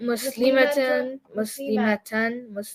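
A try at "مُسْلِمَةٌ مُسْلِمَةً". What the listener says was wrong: See, the ma was too long?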